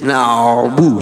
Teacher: huruf ain ini tengah-tengah, tidak terlalu mengalir, tidak terlalu tertahan